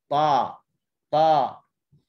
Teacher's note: Okey, yang paling tebal ada 4 ni. Di hujung lidah terangkat, pangkal lidah terangkat, menyebabkan ada lekukan di tengah lidah. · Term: itba'